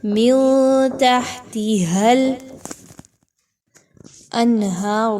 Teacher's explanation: من تحتها الانہار میں اگر آپ وقف کر رہے ہیں تو اس صورت میں آپ نے را کو پر پڑھنا ہے، ادروائز را کی پیش پڑھ رہے ہیں ملا کے کلما کے ساتھ تب بھی را کو پر ہی پڑھا جائے گا۔